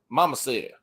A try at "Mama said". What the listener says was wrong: No, you don't pronounce the D. Mama said.